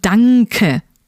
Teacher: whenever N and K come together, there's that hidden kind of ng sound that links them together